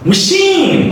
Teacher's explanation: The first vowel is reduced, the next vowel is stretched. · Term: Schwa sound